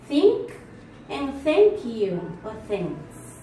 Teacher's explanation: According to voicing is voiceless. Place of articulation is dental. Manner of articulation is fricative, like in think, and thank you or thanks.